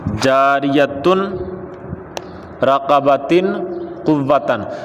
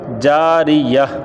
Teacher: اس پر جو حرکت ہو وہ ختم کر دیں، اس کو ساکن کر دیں، ساکن ہا بنا دیں، تاب یہ نہیں رہے گی۔ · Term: ہا ساکن